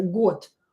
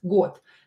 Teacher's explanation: O here is in a strong position and I pronounce it as O, год. O, it is stressed, год.